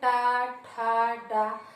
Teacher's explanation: आपकी जो जीभ का अगला भाग होता है वो हमारे मुख के अंदर ऊपरी छत को स्पर्श करता है, इसलिए हम उसको कहते हैं मूर्धन्य, या फिर कहीं के इसको मूर्धा भी कहते हैं। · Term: मूर्धन्य वर्ण